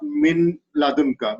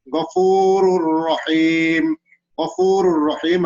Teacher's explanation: we have to read jointly without any gunna. It is called idgham without gunna, idgham bila gunna.